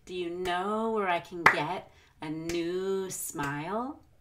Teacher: We want to stretch out the vowels in our stressed words. But words like can will become a very quick kin. · Notice how I really prolong the vowel in new.